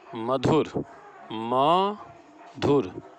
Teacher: म पर हम ज़्यादा बल दे रहे हैं, अतः यहाँ म पर बलाघात है।